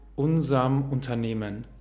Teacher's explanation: Hier hört ihr, wird unserem fast wie unserm, unserm. Unserm oder unserem, beides sind korrekte Formen, beides sind korrekte reduzierte Formen.